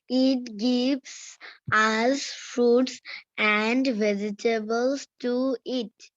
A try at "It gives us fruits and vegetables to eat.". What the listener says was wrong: No baby, এতক্ষণ শুনতে হবে কেয়ারফুলি যে আমরা টি গুলোকে কিভাবে উচ্চারণ করেছি। টি যেখানে থাকবে সেখানে ঠ এর মতো করে উচ্চারণ করব। ইট, ঠ। ভেজিটেবলস, টি আছে, ভেজিটেবলস, ডোন্ট সে ভেজিটেবলস, ঠিক আছে? ভেজিটেবলস, দেন টু, টি ও টু, ইট, লাস্টে টি আছে, দেন ঠ, to it. It gives us fruits and vegetables to eat.